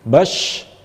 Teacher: Bas, baz, semacam itu, ada yang mendesisnya. Kemudian tafashi ini adalah berhamburan angin di mulut